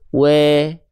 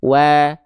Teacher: harus vokalnya vokal A tipis, bukan vokal E.